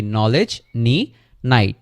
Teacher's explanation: কোনো একটা ওয়ার্ডের শুরুতে যদি খে তারপরে এন থাকে, তাহলে ফার্স্ট খেটা হচ্ছে উচ্চারণ করা হয় না, আর এন থেকে উচ্চারণ শুরু হয়